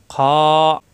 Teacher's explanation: খ উপরে নক্তা, কণ্ঠনালীর শেষ অংশ। খ গলার ভিতর থেকে। · খ খা হবে না, এক আলিফ পরিমাণ টান।